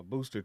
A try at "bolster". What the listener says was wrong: Bolster. The L. Bolster with the L, yeah.